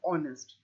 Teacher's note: the H is a silent h so we do not pronounce the H we don't say it's a silent h we say honest so